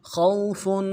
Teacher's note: خا کو واو کے ساتھ ملانا ہے، خا کو موٹا ادا کریں گے، واو لین ہے بغیر کھینچے پڑھیں گے · موٹا ادا کریں گے، واو لین ہے بغیر کھینچے پڑھیں گے، فا کے اوپر تنوین ہے، غنے کو یہاں پہ اظہار کے ساتھ پڑھیں گے، آگے حروف حلقے میں سے آ رہا ہے